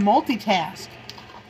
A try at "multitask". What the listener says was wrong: You have to pronounce the I.